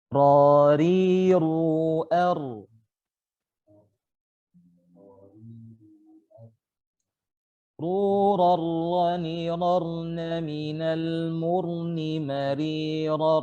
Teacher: Huruf ra terletak di awal punggung ujung lidah bertemu dengan gusi dari dua gigi seri atas. Ya, sama penjelasannya, bertemu dengan gusi atau langit-langit di atasnya dan bukan ke gigi.